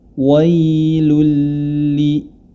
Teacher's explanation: bertemu dengan huruf lam maka hukum bacaannya adalah am bila gunah dimasukkan huruf lam ke dalam huruf lam tanpa disertai dengan gunah